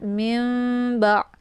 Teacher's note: Nun sukun bertemu dengan huruf ba yaitu iqlab ya. Cara baca iqlabnya yaitu bunyi nunnya dibalikkan ke dalam bunyi mim ya.